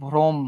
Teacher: অর সঙ্গে রফলা যুক্ত হয়েছে জন্য এই অটা কিসের মতো হয়ে যাবে? ওর মতো হয়ে যাবে।